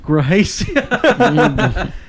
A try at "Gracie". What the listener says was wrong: Boy, I only see R's. I don't see no H's.